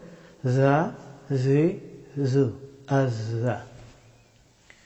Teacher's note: জিহ্বার অগ্রভাগ এবং উপরের এবং নিচের সামনের দুই দাঁতের মধ্যখান দিয়ে এই হরফটি উচ্চারিত হয় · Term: জাই